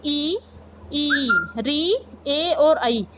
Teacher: जिन स्वरों के उच्चारण में जीभ का अगला भाग कार्यरत रहता है उन्हें अग्र स्वर कहते हैं